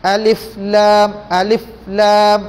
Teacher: Sebutan untuk alif ni satu harakat. Masuk kepada lam, enam harakat.